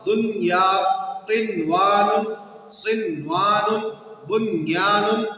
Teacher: دنیا کا جو نون ہے یہ ساکن ہے اور اس کے بعد یا یرملون میں سے آ رہا ہے لیکن یہاں ادغام نہیں ہوگا بلکہ ادھر اظہار ہوگا · ادھر نون کی آواز کو اظہار کے ساتھ پڑھا جائے گا